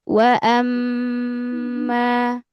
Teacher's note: Gunah itu dari khaisyum ya, dari eh rongga hidung. Jadi agak ditahan ya sampai masuk ke rongga hidung. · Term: sifat gunnah